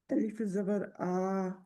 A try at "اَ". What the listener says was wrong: اب پھر تو آپ نے اتنا ہی لمبا کیا.